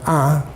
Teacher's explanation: sometimes the nasal consonant disappears altogether you just have nasalization of the vowel